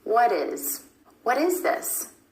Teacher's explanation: For example, take what is. Instead of a true T, what is, you're going to put in that D sound or flap T.